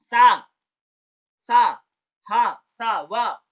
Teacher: जो हवा है वह जीभ और दांत के बीच से निकल रही है, और एक प्रकार से संघर्ष करके आसानी से नहीं निकलती है, बहुत कम रास्ता होता है, उसी से निकलती है, उसी को संघर्षी व्यंजन का।